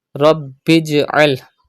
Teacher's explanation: Pronounce ba with emphasis because ba is a qalqala letter but it is mushaddad in this word, so you have to pronounce it with emphasis.